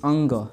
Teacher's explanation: का उच्चारण स्थान नासिका है जैसे अगर हम कहे कि अंग अंग का उच्चारण स्थान क्या होगा कंठ प्लस नासिका